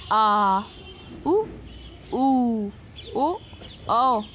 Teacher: ये सारे हमारे जीभ के पिछले भाग से निकल रहे हैं, इसलिए ये पश्च स्वर कहलाते हैं